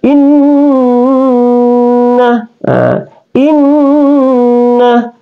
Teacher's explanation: Kalau kita lanjut alaikum in, tidak boleh berdengun, ya. Kemudian di sini ada nun bertasdik, maka nun itu dibaca gunnah atau didengunkan.